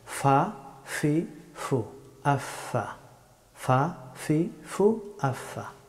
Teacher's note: ফা হরফটি উচ্চারিত হয় সামনের এই দুই দাঁতের অগ্রভাগ এবং নিচের ঠোঁটের বেজা অংশ থেকে